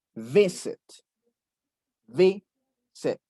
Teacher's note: Porque visit tiene el acento en V.